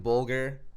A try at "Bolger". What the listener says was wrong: Bolger. Hard G.